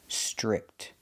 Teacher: the TR makes a CH chicken sound